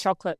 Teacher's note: So what happened is we took out the O vowel.